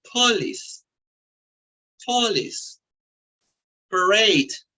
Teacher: la schwa en una sílaba abierta cuando esta es seguida por una sílaba acentuada